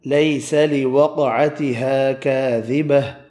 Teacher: الف مدہ 2 ہیں، دونوں ایک ایک الف کی مقدار میں کھینچ کر پڑھے